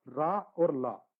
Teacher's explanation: संयुक्त एक आएगा दंत मूल, यानी कि वो मूल से भी होगा और दंत से भी होगा, रा और ला। बोलो दांत भी टच करेगा और लास्ट से भी आवाज आएगी।